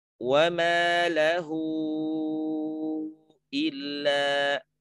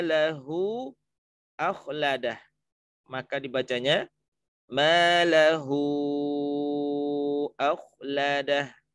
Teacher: Wa ma lahu, ketemu hamzah. Maka kata lahu itu tidak dibaca 2 harokat lagi, tapi dibacanya panjang sampai kepada 4 atau 5 harokat. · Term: madsilah tawilah